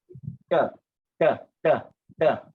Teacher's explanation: That means it is dental lah. That means your tongue will hit your front teeth lah.